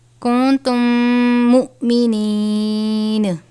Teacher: میم ساکن کے بعد دوسری میم ہے یعنی ادغام شفوی کا قاعدہ لگے گا، غنہ کر کے پڑھیں گے